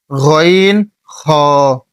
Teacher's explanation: তারপরে তিন নাম্বার মাখরাজ হচ্ছে হলকের শেষ হইতে গইন খ অর্থাৎ গলার শেষ ভাগ হইতে